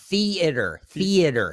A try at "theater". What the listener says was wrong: You're even giving too much A in there. It's just theater. theater.